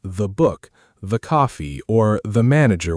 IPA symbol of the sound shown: ðə